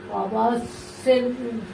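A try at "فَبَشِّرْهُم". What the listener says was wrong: ফাবাস শের কেন শির শির ফায়ের উপরে জবর ফা বা ধরছে শিনকে ফাবাস শিনের উপরে যে শির তারপরে হার উপরে পেশ মিমের উপরে সাকিন মিম সাকিন গুণা মিম হুম ফাবাশির হুম ফাবাশির হুম বিআযাবিন।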